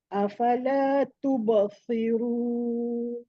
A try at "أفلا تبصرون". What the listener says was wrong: Kenapa terkeluar lidah tu? Tubassir, saya nampak jelas. terkeluar lidah. Si dalam lidah dalam si. Ada bunyi sa tak? Sad, sos. Bunyi jaulah tu.